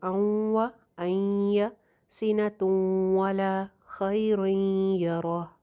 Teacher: واو اور یا پہ نون کی آواز باقی رکھتے ہوئے اَوْ اَيَّ سِنَةٌ وَلَا خَيْرٌ يَرَهُ، اس طرح سے غنہ کر کے پڑھیں گے۔ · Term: ناقص ادغام